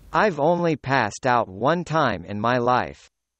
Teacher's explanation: we are actually stressing or highlighting much more on the particle